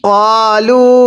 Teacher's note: এই লামের মধ্যে আমরা তিন আলিফ টান দিব